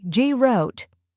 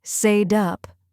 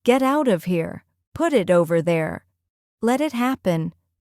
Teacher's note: You may notice that the T becomes a soft tap sound, almost like a quick D.